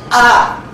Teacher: É um a precedido por uma glotal. A. Essa glotal também, essa consoante glotal, não tem nenhuma articulação na cavidade oral. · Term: glote fechada